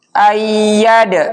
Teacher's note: Ya bertasdid tapi ynya tanpa berdengung. Dia bertasdid saja.